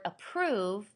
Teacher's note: if you say the word approve, the A, you don't really even hear. So your first stressed consonant sound that you hear is a P.